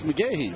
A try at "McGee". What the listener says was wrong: It's pronounced McGee. But it's spelled McGahee.